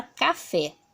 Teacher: vai descobrir que a última sílaba é mais forte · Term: oxítona